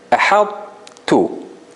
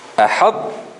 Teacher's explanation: It is as if you are about to pronounce the ta, but you don't pronounce it.